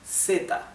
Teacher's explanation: in Latin America there is no such sound okay like the English th okay so it's always the S sound